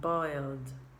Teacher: the tongue goes in the back with the l and stays there for the d sound